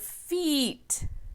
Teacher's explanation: We have another long E using what I call the smiley E's, because when we say them, we smile.